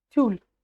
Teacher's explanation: после согласной буква «ю» у нас звучит как «ы»